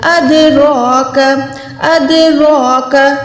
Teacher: را کے اوپر جب بھی کھڑی زبر آئے گی تو یہ پتلی نہیں بلکہ یہ موٹی ہو جائے گی. تو اس کو ہم نے منہ کو گولائی کر کے ادا کرنا ہے. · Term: را کھڑی زبر